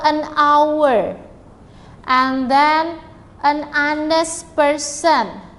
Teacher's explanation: penulisannya sebenarnya how ya, tetapi cara pengucapannya, pronunciation-nya itu H-nya itu tidak dibaca, dibacanya our seperti itu ya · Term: silent